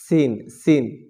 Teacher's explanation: সিনের মাখরাজ হচ্ছে জিহ্বার আগা সামনের নিচের দুই দাঁতের পেট ও আগার সঙ্গে লাগাইয়া